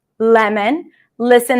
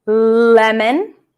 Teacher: the tip of the tongue goes up to touch the upper palate